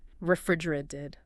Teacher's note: the middle T. Yeah. In American English, it often softens. Sounds more like a refrigerated.